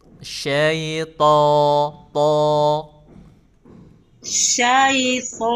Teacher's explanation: huruf to-nya itu tuh nggak perlu ke hidung. Huruf to biasa aja.